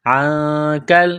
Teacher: نون ساکن کے بعد کاف ہے حروف اخفا ہے تو نون ساکن پر غنہ کریں گے